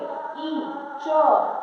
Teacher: सब का उच्चारण किससे होता है तालू से होता है